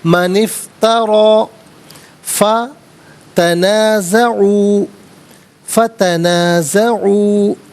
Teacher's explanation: نون کے نیچے زیر ہوگا، اس سے افترا کی فا ساکن کے ساتھ ملایا جائے گا، درمیان میں سے الف یعنی حمزہ کو حذف کریں گے